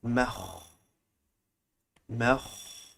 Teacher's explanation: it's coming from the top of your throat very close to that small tongue that is hanging